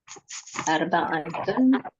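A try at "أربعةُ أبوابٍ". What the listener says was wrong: Arba'atu ya, bukan arba'atun. Tapi kalau udah menjadi digabungkan dengan kosakata, dia menjadi harokat dia biasa. Jadinya arba'atu. Arba'atu abwabin.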